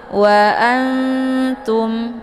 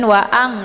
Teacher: jadi cara bacanya nun-nya disamarkan Ya siap-siap masuk ke huruf ta